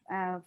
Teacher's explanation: Keeping your sound in your nose. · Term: gunna